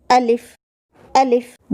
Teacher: الف منہ کے خالی حصے سے ادا ہوتا ہے